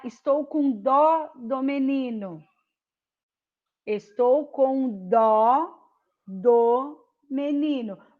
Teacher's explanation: O dó é uma sílaba tônica. Então, ele recebe acento.